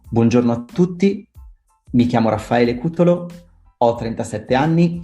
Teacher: they kind of have an ascending tone at the end of the sentence